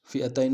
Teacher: فی المنافقین، فئتین میں حمزہ کو نون سے ادا کریں گے، تا کو یا کے سامنے آئیں گے، یا لین بغیر کھینچے پڑیں گے